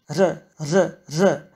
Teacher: You start making the regular alveolar tap. But instead of blocking the air for a moment and letting it pass next, you let the air create a friction, hence, ‘fricative’. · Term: voiced alveolar tapped fricative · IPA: ɾ̝ə